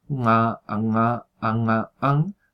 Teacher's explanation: Ya se está pronunciando en la zona velar